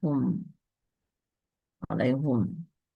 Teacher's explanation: Imam Hamzah baik ketika waqaf pada lafal tersebut maupun ketika wasol membaca dengan bidhammil ha, dhammah haknya.